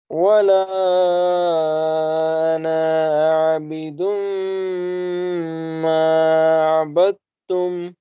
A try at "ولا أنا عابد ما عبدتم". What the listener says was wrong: अना को स्ट्रेच नहीं करना, आना पढ़ना, एक्सेप्शनल वर्ड याद है ना, आना। वला अना आबिदुम मा अबदतुम।